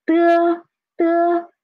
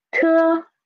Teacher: De, de, soft air. Te, stronger air. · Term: unaspirated and aspirated initials